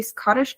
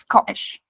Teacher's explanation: when you are pronouncing this in a Cockney London accent, you wouldn't say Scottish, it's Scottish. No T, right? T's are dropped here.